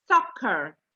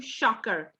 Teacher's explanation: It's not a sh sound, it's a s sound. Your teeth on top of each other.